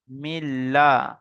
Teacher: লামের উপর তাসিদ তাসদ অক্ষরকে দুবার পড়তে হচ্ছে